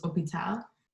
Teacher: So some examples for the H, there's hospital, which is hôpital, so just get rid of that H sound, because the H in English is glottal, which means you pronounce it, but in French it is not